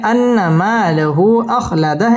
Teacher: খালি আলিফ মদের হরফ এক আলিফ টেনে পড়তে হবে লাহু মধ্যে মুনফাসিল তিন আলিফ টান দিয়ে পড়তে হবে